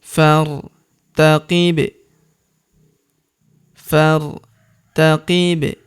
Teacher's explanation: Huruf ba berharokat sukun kita pantulkan atau kita qalqalahkan.